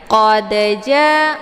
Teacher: Dalnya dipantulkan dengan pantulan ringan, ya. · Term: qalqalaf sughra